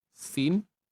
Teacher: Untuk sin ini pula kita perlu baca dengan 6 harakat.